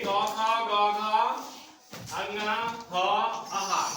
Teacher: अ से लेके क ख ग घ अंगना ह आहा, ये सब के सब कंठ से निकलते हैं